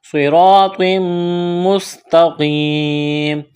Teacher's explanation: تنوین کے بعد میم مشدد ہے، ادغام کریں گے غنے کے ساتھ ، صراط مستقیم، یا مدہ ہے، ایک الف کے برابر کھینچنا